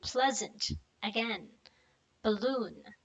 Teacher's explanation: a quick relaxed neutral vowel pronunciation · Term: schwa